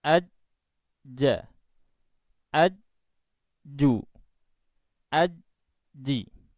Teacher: Suara keluar tanpa diiringi udara nafas, karena jim itu mempunyai sifat jahar.